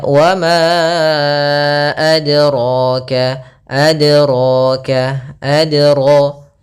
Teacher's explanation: ini kurang tepat juga karena dia menambahkan hamzah di dalam huruf dalnya